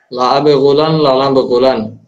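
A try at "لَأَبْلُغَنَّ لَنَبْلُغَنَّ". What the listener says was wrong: না গুলান না তো, আব লুগান। না না, বালাগা ইয়াবলুগ, আপনি গইন রে আগে আনতেছেন কেন? আপনি বলছেন লা আব গুলান, আব গুলান না তো, লা আব লুগান। লা নাব লুগান।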